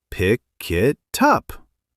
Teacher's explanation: The K sound at the end of pick jumps onto it, making it sound like kit. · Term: linking